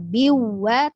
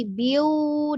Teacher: Jangan cuma ditekan biwa, tapi biu, ditahan dulu monyong ya.